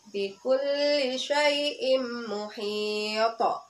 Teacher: Dan biasanya qalqalah kubro itu berada di akhir kata atau lafal. Sedangkan cara membacanya dengan cara memantulkan dengan pantulan yang kuat